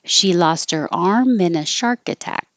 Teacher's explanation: So lost her, get rid of the H. The T connects to the ER and it sounds like lost her.